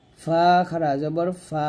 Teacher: ফা উপরে দাঁত নিচের ঠোঁটের সাথে লাগিয়ে উচ্চারণ করবেন